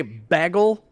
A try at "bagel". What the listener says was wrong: Bagel. It's not B-E, it's B-A. Bagel. Bagel is not a fucking word.